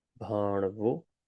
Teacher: on the roof of your mouth, fold it and just say an N, an N sound like N, but do with a folded tongue